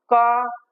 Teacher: जैसे हाथ ऐसा कर लेंगे और बोल के देख लें क मुख से कोई भी वायु निकल कर के महसूस नहीं हो रही है कि हमारे हाथ तक आ रही हो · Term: अल्पप्राण